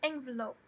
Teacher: A primária é a primeira, n, e o lope é a secundária. Na do meio, a gente tem o schwa. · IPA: /ˈenvələʊp/